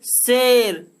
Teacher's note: ये तलाबेसा का जब उच्चारण करते हैं तो हमारा जो जीभ होता है दोस्तों वो तल को स्पर्श करता है